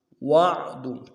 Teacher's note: واو کو عین کے ساتھ ملانا ہے، عین کو موٹا کریں گے ، اور دال کو نرم سے ادا کریں گے، هَذَا الْوَعْدُ